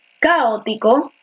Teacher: Tú dices caótico, ¿no? Con la fuerza de voz en la O, la fuerza de voz en el medio.